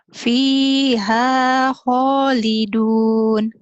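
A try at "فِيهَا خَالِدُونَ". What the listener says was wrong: kho-nya kurang ngorok ya. Fiha khalidun. Dilatih aja. Fiha khalidun.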